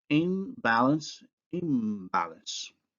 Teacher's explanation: N following B, that's an alveolar following a bilabial, and the nasal becomes bilabial